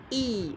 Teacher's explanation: अवृत्ताकार ई, बहुत ज़्यादा मुंह भी नहीं खुल रहा है, समृद्ध स्वर है